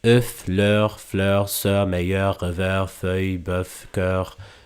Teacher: So these are the three rounded vowels of French, each with a different tongue position, but the same degree of very, very rounded lips.